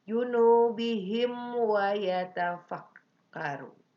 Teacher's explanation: Mim mati atau mim sukun berhadapan dengan waw. Itu ada hukumnya apa? Idhar sapawi. Dibacanya tidak boleh sama, tidak boleh dengung, tapi harus jelas.